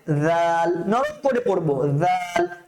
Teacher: জিহ্বার আগাটা আমার দাঁতের মধ্যে লাগবে